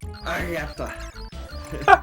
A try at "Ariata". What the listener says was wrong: Yeah, and you didn't roll that at all. Roll. Aare-aitta. Ei varre.